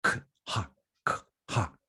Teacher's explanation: hay un cambio de k a aspiración